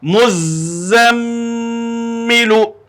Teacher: میم میں مشدد ہونے کے ساتھ ساتھ میم کے اوپر میں نے ابھی اس کے پہلے درس میں آپ لوگوں کو بتایا تھا کہ میم پر اگر تشدید ہو تو غنہ ہوگا. تو یہاں غنہ کے ساتھ اس کو پڑھیں گے